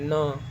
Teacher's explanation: इसको आप बोल के देखिए न नाक से भी हवा आ रही है। मुंह से भी हवा आ रही है। · नाक से भी हवा आ रही है, मुंह से भी हवा आ रही है, तो इसमें नाक और मुंह दोनों का, इसको उच्चारण करने में नाक और मुंह दोनों का प्रयोग हो रहा है। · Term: अनुनासिक वर्ण